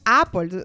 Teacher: que en el inglés la boca es un poco más cerrada es un sonido más corto el más corto y la boca va más cerrada